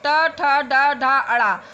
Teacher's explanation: मूर्धा का भाग जीवा के अग्र सिरे से स्पर्श करती है। टा अग्र भाग मतलब आगे का भाग। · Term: टा वर्ग